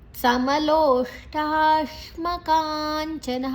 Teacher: ಸಮಲೋಷ್ಟಾಶ್ಮ ಲೋ ದೀರ್ಘ ಶು ಷಣ್ಮುಖ ಟಾ ಶಿಮ ಸಮಲೋಷ್ಟಾಶ್ಮಕಾಂಚನ ಕಾ ದೀರ್ಘ. ನಂತರ ಅಲ್ಲಿ ಅನುಸ್ವಾರದ ಉಚ್ಚಾರಣೆ ಞ, ಮುಂದಿನ ಅಕ್ಷರ ಚ ಇದೆ.